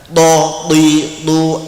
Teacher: punggung ujung lidah mengenai pangkal gigi depan atas sampai naik gusinya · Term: huruf th